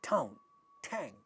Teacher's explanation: voiceless stops like pa, ta, ka, are becoming aspirated in English at the word initial position. · All these initial sounds are aspirated in these monosyllabic words.